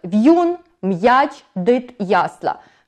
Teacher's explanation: У всіх цих випадках ми чуємо, що попередній приголосний перед апострофом у нас твердий